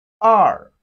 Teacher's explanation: E, two in Chinese is pronounced as R. R, it has a falling tone of Chinese language, falling tone. R. R.